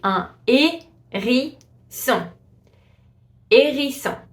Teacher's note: So you see the H is completely silent. You just pronounce the A with the accent.